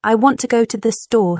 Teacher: I want to go to the store stresses want and store.